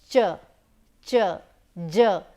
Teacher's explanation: The air is getting blocked in our mouth like a stop, but it is being released like a fricative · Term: affricates